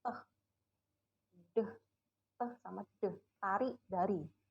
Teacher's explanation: Ya, kita pakai alveolar ridge untuk menghambat aliran udara keluar.